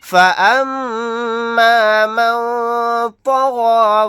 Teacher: میم کے اوپر تشدید ہے، یہاں پر غنہ کر کے پڑھیں گے